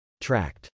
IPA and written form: trˈækt (tract)